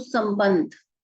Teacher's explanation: इसमें म की भी आवाज आ रही है और न की भी आवाज